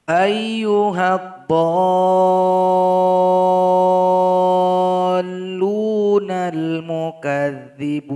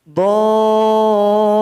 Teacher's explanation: panjangkan dulu selama 6 harokat atau 6 ketukan, baru ditasydidkan kepada huruf lam.